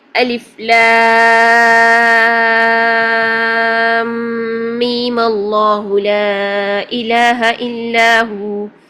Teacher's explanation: الف لام میم کے میم کو قصر کے ساتھ پڑھیں اور پھر فتحہ دے کر وصل کر دیں